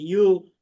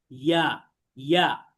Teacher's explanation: মুখ স্বাভাবিক রেখে পড়তে হবে, অর্থাৎ মুখ গোল করা যাবে না, বলা যাবে না ইউ, এরকম বলা যাবে না, বলতে হবে ইয়া।